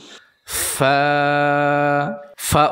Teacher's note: উচ্চারণের সময় নিচের ঠোঁটের ভেজা অংশ উপরের দুই দাঁতের আগার সাথে লাগবে